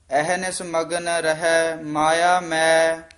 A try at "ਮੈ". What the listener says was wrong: ਇਹ ਮੈਂ ਉਚਾਰਨ ਕਰਨਾ ਹੈ, ਨਾਸਕੀ ਉਚਾਰਨ ਨਹੀਂ ਕਰਨਾ। ਮੈਂ ਨਹੀਂ ਕਹਿਣਾ, ਮੈਂ ਬੋਲਣਾ ਹੈ।